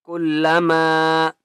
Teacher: لام کے اوپر تشدید ہے اس لیے مضبوطی کے ساتھ پڑھیں گے